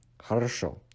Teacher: Remember that because you can maximum pronounce O once in one word, the first two O's in the beginning and the middle part of this word are being de-stressed to A, so it is pronounced as хорошо.